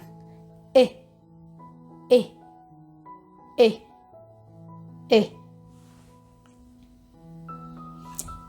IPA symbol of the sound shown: i